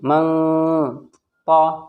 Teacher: نون ساکن کے بعد تو آ گیا حروف اخفا میں سے، تو یہاں پر ناک میں آواز چھپے گی